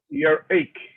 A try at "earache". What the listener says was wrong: Earache, very good.